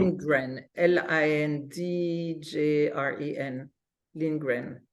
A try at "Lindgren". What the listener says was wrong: JREN, not GREN. JREN.